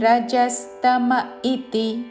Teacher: ఇతి కాదు, రెండు హ్రస్వాక్షరములు ఇతి